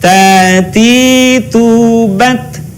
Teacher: Perhatikan ada suara, ada udara yang mengalir ketika melafalkan huruf ta.